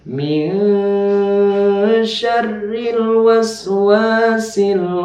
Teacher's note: ikhfa dengung dan dengungnya itu harus ditahan dua ke tubuh atau satu Alif jadi harus ditahan dulu kemudian